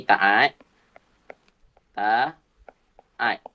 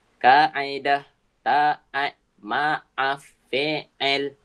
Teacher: Ha yang ni bunyi dia a tu kaedah taat maaf fi'il. Ha bunyi a tu dekat rongga tekak. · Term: bunyi ain